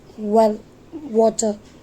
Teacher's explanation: व sound produce करते समय लिप्स की पोजीशन वैसी होनी चाहिए जैसे हम यू बोलते समय लिप्स को राउंड करते हैं। व sound represent the voiced लेबियोवेलर approximate sound